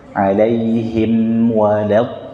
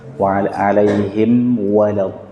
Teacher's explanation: Langsung wa alaihim, jangan berhenti di alaihim, langsung satu nafas.